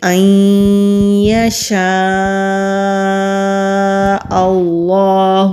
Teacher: ادغام کہتے ہیں ملا کر پڑھنے کو، اور غنہ بھی کریں گے، لیکن نون ساکن ہے اور اس کے بعد یا کے اوپر تشدید ہے، اس لیے ہم زیادہ زور یا کے اوپر دیں گے۔ نون ساکن کی آواز کو حمزہ اور یا میں مدغم کر دیں گے، یعنی کہ جذب کر دیں گے، تو اس لیے نون ادا نہیں ہوگا · حمزہ کے اوپر مد ہے اور اس کے بعد پھر حمزہ آ رہا ہے، اس مد کو مد متصل کہتے ہیں کیونکہ حمزہ اسی کلمے میں ہے، اس لیے اس مد کی مقدار بھی 3 سے 4 الف کے برابر ہے، یعنی کہ جتنی دیر تک ہم اپنی 3 یا پھر 4 انگلیاں بند کریں اتنی دیر تک کھینچ کر پڑھیں گے۔